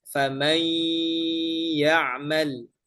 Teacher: pada saat kita melafalkan dua huruf tersebut menjadi satu, maka harus menyertakan suara sengau. · Nah, di situlah suara sengau ada famay yaal. Adapun ketika kita melafalkan huruf yang kedua, maka tidak boleh lagi ada sengau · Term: idgham bighunah